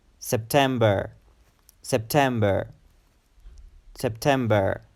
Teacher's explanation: It's a three-syllable word, September, September. And the emphasis is on the second syllable